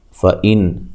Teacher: نون ساکن کا اظہار ہے، غنہ نہیں کریں گے